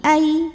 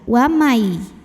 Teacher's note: dan dengung tahan suaranya masuk hidung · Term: idgham bighunnah